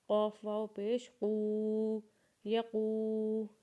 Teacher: قاف کو جب واو کے ساتھ ملائیں گے تو اسے ایک الف کے برابر کھینچیں گے، اور قاف کی آواز کو موٹا کر کے نکالیں گے